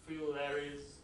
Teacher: the dental fricative is elided, is assimilated to lateral.